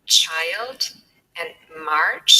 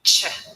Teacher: so we have t straight away followed by sh